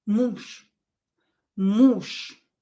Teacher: Because Ж is voiced and it is located at the end of the word, it will become unvoiced ша.